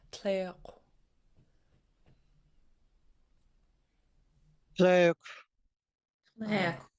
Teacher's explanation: me good it's got an underlying K and then a w the W tells you to round your lips as your breathing out the underlying K